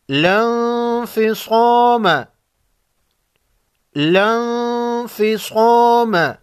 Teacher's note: نون ساکن پر غنہ ہوگا، اس کے بعد حروف خلقی میں سے کوئی حرف نہیں، اس کو اخفاء حقیقی کہتے ہیں